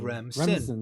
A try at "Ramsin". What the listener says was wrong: You said Remsen. I'm still calling you on the pronunciation of the vowel A. hearing a soft E. I'm hearing Remsen, like REM sleep.